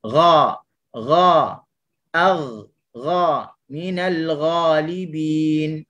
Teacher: kita nak sebut huruf ghain ni dia tergolong dalam huruf yang pangkal lidahnya terangkat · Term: pangkal lidah terangkat